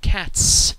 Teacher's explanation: the t at the end of the word cat is devoiced and therefore the s remains devoiced as well